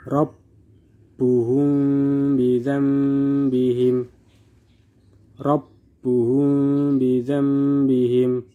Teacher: Di sini mim sukun bertemu dengan ba, maka dibaca samar disertai dengan dengung. Mim sukun bertemu dengan ba, maka dibaca samar disertai dengan dengung. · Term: ikhfa syafawi